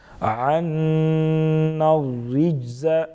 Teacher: عنا الرجز نون مشدد غنہ کریں گے